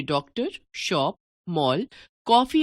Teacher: इनमें लगने वाला स्वर न तो हिंदी का ओ स्वर है और न औ। अंग्रेजी से आए इस स्वर के लिए जो वर्ण बनाया गया है वह है औ। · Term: आगत स्वर